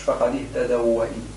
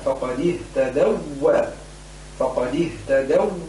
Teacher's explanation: صارت بالتخفيف كأنها واو مفتوحة بينما هي مشددة لابد من إعمال النبر فيها